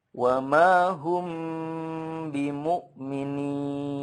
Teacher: Jadi kalau ada mim sukun bertemu ba, itu kan hukumnya ikhfa syafawi, ya, itu harus bunyi emnya itu harus dipanjangkan atau ditahan sepanjang 2-3 harokat.